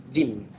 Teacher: Huruf jim pertengahan daun lidah. Maknanya kat tengah-tengah lidah, apabila ia diangkat menekan pada langit-langit keras, jim. Kemudian tekanan udara keluar daripadanya.